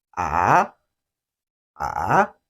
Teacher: this tone starts from the lower range of your speaking voice, drops a little, and then rises. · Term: third tone